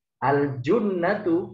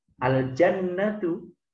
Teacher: Tetapi karena harokatnya salah, al-jannatu artinya surga. Al-junnatu hanya harokatnya u, asalnya a dibaca u.